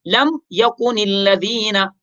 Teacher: میم کو ظاہر کر کے واضح کر کے پڑھیں گے، اس میں غنہ نہیں کریں گے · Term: میم ساکن